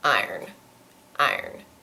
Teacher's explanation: I'll generally say something more like iron iron it's got like one and a half syllables